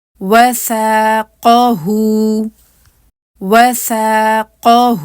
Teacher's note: اس میں واو کے لیے آپ کے ہونٹ بالکل گول ہوں گے, اس کے بعد فتحہ کے لیے کھلیں گے, پھر ثا فتحہ کو آپ جو ہیں 2 کاؤنٹس لمبا کریں گے. اس کے علاوہ ثا کے لیے زبان جو ہے وہ اپنے مخرج پہ آئے گی.